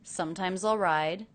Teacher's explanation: I notice the ending S here is pronounced as a Z.